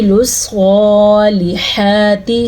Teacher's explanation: سواد کو پر پڑھنا ہے کیونکہ سواد ان 7 حروف میں شامل ہے جو پر پڑھے جاتے ہیں. پر پڑھے جانے والے جو 7 حروف ہیں وہ خا، صاد، ضاد، غین، طا، قاف، زوا.